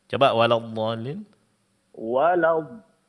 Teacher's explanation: Di sini panjangnya 6 harakat karena dia mad lazim